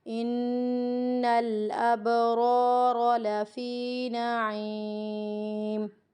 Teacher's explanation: یہاں پہ قلقلہ ہو رہا ہے، قلقلہ کی ادائیگی کو بھی ٹھیک کرنا ہے ہمیں۔ دونوں را کے اوپر زبر کی حرکت ہے، یہ موٹی پڑھی جائیں گی۔